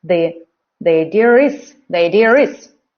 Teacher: So this R is not in the spelling, but they just use it to separate two vowels.